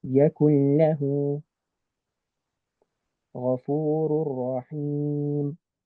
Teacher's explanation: So that's for lam and ra. We skip the ghunna component and we skip the noon component. So you really just skip the whole noon. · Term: idgham without the ghunna